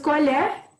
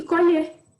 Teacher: Colher tem um som mais fraco no E, colher tem um som mais acentuado no E.